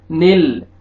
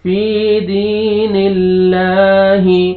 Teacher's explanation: نون کو لام کے ساتھ ملائیں گے اور لام کو باریک پڑھیں گے